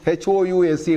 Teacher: The O-U is au. It's a diphthong.